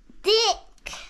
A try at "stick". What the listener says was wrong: Stick. You're saying it with a D. Stick.